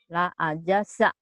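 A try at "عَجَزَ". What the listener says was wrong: La ajaza. Bukan la ajasa ya. La ajaza. Satu keras, satu rapuh. Jaja juga. Satu J, satu Z. La ajaza.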